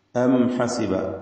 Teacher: സക്കിനത്ത് അമീമിനെ ഇൽഹാർ ഷഫവി നൽകി മണിക്കാതെ വെളിവാക്കുക. ഹ വ്യക്തമാക്കി അതിൻ്റെ മഖ്റജിൽ നിന്ന് ഉച്ചരിക്കുക.